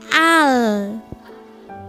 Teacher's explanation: seluruh pucuk lidah sampai ke samping pucuk lidah ini di gusi itu adalah huruf lam